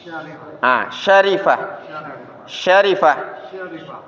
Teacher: Tengah lidah bertemu langit-langit di atas s s jangan dibunyikan dulu jangan disebutkan dulu tapi Syarifah coba